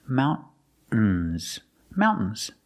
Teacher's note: you can use a stop T and say mountains · Use a stop T, mount, and then you fall to the N.